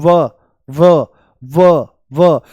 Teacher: होठों को छू लेते हैं, होठों को स्पर्श करते हैं। इसके उच्चारण में दांत होठों को स्पर्श करते हैं। · जैसे बोल दो व व व व, तो जो ऊपर वाले दांत हैं ये होठों से मिल जाते हैं। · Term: दंत ओष्ठ